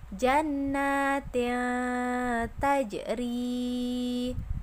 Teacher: menyamarkan huruf yang pertama pada huruf yang kedua dengan mendengung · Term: ikhfa